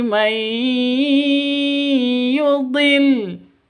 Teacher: cara bacanya masuk ke ya disertai dengung karena idgham bigunnah.